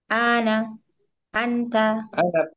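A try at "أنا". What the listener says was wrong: Ana pendek.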